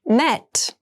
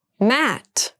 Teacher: Met has the more closed sound and Matt has the more open Sound